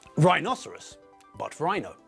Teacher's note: when we abbreviate the word, the stress moves from the second syllable to the first.